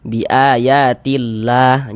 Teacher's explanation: Kalau ada lafaz Allah sebelumnya ada harakat kasrah, maka dia dibaca tipis, dibaca tarkik sehingga dibaca biayatillah seperti itu. · Ada lafaz Allah sebelah kanan lafaz Allah ya, atau sebelum lafaz Allah ini ada ini nih, ada harokat kasroh. Maka lafaz Allahnya dibaca tarkik, dibaca tipis. Huruf lam yang di tengah nih, huruf lam jalalah.